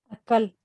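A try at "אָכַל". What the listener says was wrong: Casi. No tiene dagesh. Ajal.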